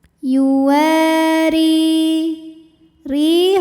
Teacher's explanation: wau dipanjangkan dua harakat [Musik] yuwari kemudian ro dibunyikan secara tartiq sebab barisnya kasrah maka kita bunyikan rnya tipis